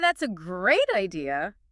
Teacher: The emphasis lands squarely on great, not that's a great idea, all spread out.